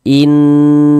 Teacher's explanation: Kita ghunahkan. Jadi di bagian inn-nya itu suaranya itu kita tahan, kita panjangkan sebentar. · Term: ghunah musyaddadah, gunnah musyaddadah